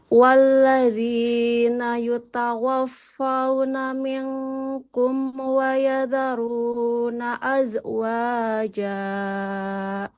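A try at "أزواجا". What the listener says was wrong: Yang pertama, zainya jangan memantul, nggak boleh az. Az, coba Ibu. Az. Nah, nggak ada e-nya. Azwaja. Jimnya 2 harokat saja, nggak boleh lebih. Azwaja.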